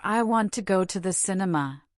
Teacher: Clap on go and cin.